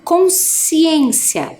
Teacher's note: o SC parece que faz só o som do S né ó consciência É também um dígrafo né quando as letras